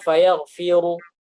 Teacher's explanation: dikecilkan suaranya, tetap ada tafkhimnya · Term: raum